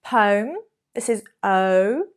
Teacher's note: Poem, this is O, your mouth moves, that's a sign it's a diphthong.